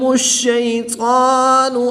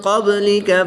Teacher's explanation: قاف طا حروف مستعلیہ میں سے ہیں، ان کو پر یعنی موٹا پڑھیں گے